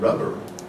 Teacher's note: So the B of bat may or may not be voiced, but the B of rubber is always voiced.